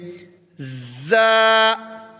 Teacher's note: تو یہ زا حروف صفیریہ میں سے ہے، اس کو سیٹی کی طرح پڑھیں گے